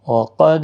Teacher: وقد دال ساکن پر قلقلہ ہوگا